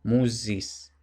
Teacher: Pues bueno, aquí tenemos esta forma del genitivo musis, que como está entre dos vocales, la U y la I, lo que tiene realmente es el alófono sonoro, por tanto no musis, sino musis.